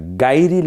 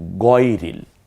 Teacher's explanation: গাইনের উপরে গইনের উপর যখন জবর হয় তখন গা না হয়ে গই থেকে যায়। তাহলে আমরা গাইরিল বলি না, বলি গয়রিল।